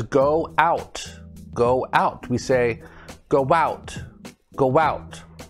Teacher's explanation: sounds like we're putting a w in between the two o's